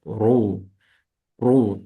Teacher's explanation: In case of Dhamma, also the same, you say Ru. Ru, circling the lips, and the sound is filling the whole mouth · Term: heavy letter